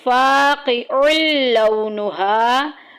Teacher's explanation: لونها میں دیکھیں تنوین آ گئی ہے عین کے اوپر، تنوین کو لام کے ساتھ ملا دینا ہے